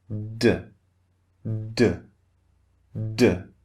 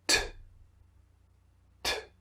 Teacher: try the second sound t T there's much more air okay so the second sound the unvoiced is more forceful